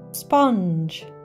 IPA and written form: spʌndʒ (sponge)